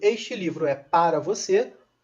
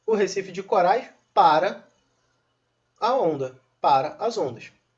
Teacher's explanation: este para não tem nenhum tipo de tônica ok porque porque ele vai precisar da tonicidade da palavra seguinte